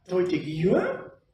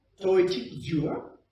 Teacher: a pineapple goes up and a coconut goes down